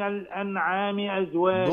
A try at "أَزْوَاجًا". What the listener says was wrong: ضم شفتيك. أزواجا